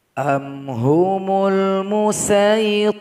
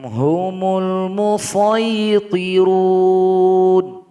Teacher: Jadi boleh dibaca dengan salah satu. Boleh dengan sin, boleh dengan shad.